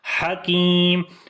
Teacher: ہا کو گلے کے درمیان والے حصے سے پڑھیں گے, لمبا کریں گے کاف کو.